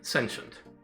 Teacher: the T goes soft, and you don't really pronounce the vowels at all. They just turn into a schwa. Sh. And that's fine.